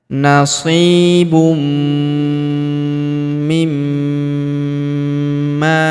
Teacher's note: Huruf ma kita tahan dan kita tekan serta kita dengungkan 2-3 harokat karena terdapat tanda tasydid di atasnya.